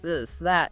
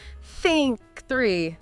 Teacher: The voiced one vibrating like in the this that and the unvoiced one just air like in think three. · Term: the the sound